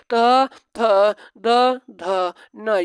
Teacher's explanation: त वर्ग को कहा जाता है दंत, जो दांतों की मदद से बोला जाता है।